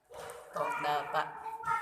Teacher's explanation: Ujung lidah bertemu gusi atas. to, da, ta, Ujung lidah bertemu antara gigi seri bawah dan atas.